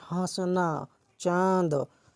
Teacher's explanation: अनुनासिक स्वर का रूप है जिसका उच्चारण मुख व नाक दोनों से होता है